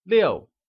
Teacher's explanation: 6 translates to 六 and is pronounced with a falling tone